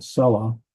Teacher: Selah, the accent should go on first syllable.